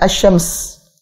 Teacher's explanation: Langsung merebut ke huruf shin, melebur ke huruf shin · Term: syamsiyah